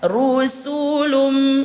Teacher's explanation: didengungkan atau ditahan suaranya dua ketukan atau dua harakat